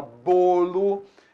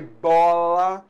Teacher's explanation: Então bolo, o timbre é fechado. Bola, o timbre é aberto.